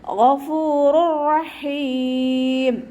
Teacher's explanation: ഗൈന് ഇസ്തിഅലാൻ്റെ ലെറ്ററാണ്. നാവിൻ്റെ ബാക്ക് മുകളിലേക്ക് ഉയർത്തി കൊടുക്കുക കേട്ടോ. മഖ്റജ് വരുന്നത് അദ്നൽ ഹൽക്കാണ്.